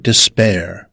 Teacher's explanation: Pronounced desPAIR with stress on the second syllable.